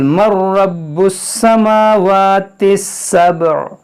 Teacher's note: یہاں پر دیکھیں قل مر، میم نون را زبر مر، اس نون را میں داخل ہوگا، یہاں پہ نون کی آواز ہی نہیں آئے گی، نون سائلنٹ ہو جائے گا